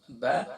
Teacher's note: pronouncing from wet part of both lips ، با دونوں ہونٹوں کے گیلے سے کو ملا کر سختی